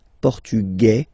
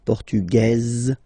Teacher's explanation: Masculine, portugais, you don't pronounce the S. Feminine form, portugaise, you pronounce this z sound